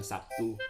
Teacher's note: Dalam bahasa Indonesia sering diucapkan Sabtu, bukan Sabtu atau Sabcu ataupun lainnya, di mana terlihat bunyi B berubah menjadi bunyi P sebagai akibat pengaruh bunyi T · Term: asimilasi